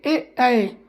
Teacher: कंठ तालव्य, कंठ मतलब गला, तालव्य मतलब तालू ऊपर का, ठीक। ए ऐ, तो कंठ भी यूज हो रहा है और ताल भी यूज हो रहा है, तो ए ऐ, तो वो हमारा कंठ तालव्य हो गया।